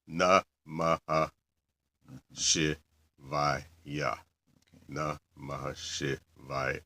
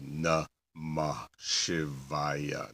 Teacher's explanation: when you have an aha followed by an S sound, the h part actually gets kind of swallowed into it.